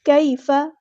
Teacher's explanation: ہم نے یہاں پر کاف کو باریک پڑھنا ہے